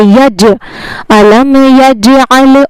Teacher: أَلَمْ يَجْعَلْ، اور یہاں پر جو جیم آیا ہے اس پر قلقلہ ہوگا، یعنی اس کو کیسے پڑھنا ہے؟ اس کو پڑھتے وقت اس کی آواز لوٹے گی، یعنی اس کے جو مخرج ہیں جیم کے وہ ٹکر کھا کر الگ ہو جائیں گے۔